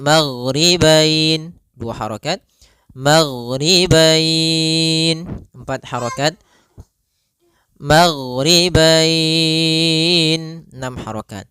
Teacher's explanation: Disebabkan karena adanya huruf fathah dan huruf bertemu dengan huruf ya sukun atau waw sukun di akhir bacaan. Panjang untuk mad lin sendiri kita boleh panjangkan 2 harokat, boleh 4 harokat, boleh pula 6 harokat. Maka kita boleh membacanya maghribain 2 harokat, maghribain 4 harokat, maghribain 6 harokat.